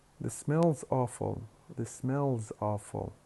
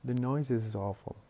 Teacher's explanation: because this word, the word noise, ends with the sound Z. Then we have to pronounce the auxiliary as a separate syllable.